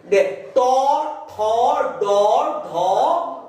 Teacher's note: এই ধ্বনিগুলো হচ্ছে মূর্ধন্য ধ্বনি। জিহ্বাটা মূর্ধায় গিয়ে স্পর্শ করছে